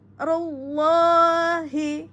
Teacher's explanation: Ro tebal, tafkhim pada lafaz Allah. Rullahi, tafkhim.